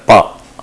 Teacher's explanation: pa, where the constriction is at the lips